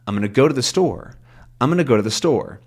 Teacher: Because go also isn't that important. It kind of gets the stress mostly on store and then a little bit on I'm